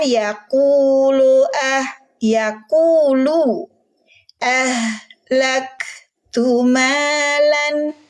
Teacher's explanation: Huruf lam domah bunyinya lu, jangan lo